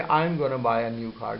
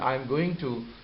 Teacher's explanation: going to is mixed together, these two sounds are joined together, and a result that we have is gonna